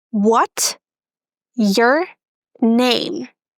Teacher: sometimes native speakers are going to drop S in what's. And as a result, we have what, your name.